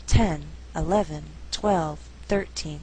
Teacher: Now when we count, the stress is on the first syllable. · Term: shifting stress